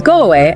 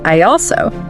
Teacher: vowel to vowel liaisons, where we often add like a W or a Y sound to bridge the gap. So go away becomes go away, and I also becomes I also.